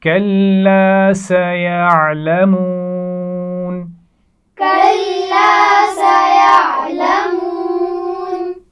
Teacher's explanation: کلا لام پر شد ہے، سختی سے پڑھا جائے گا اور اس کے بعد الف ہے، الف سے پہلے زبر ہے لام پر، تو یہ الف مدہ ہے، آپ جانتے ہیں.